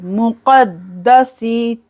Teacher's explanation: दाल को यहाँ पर 2 बार पढ़ेंगे, क़द्दा सीन जेर सी, मुक़द्दसी।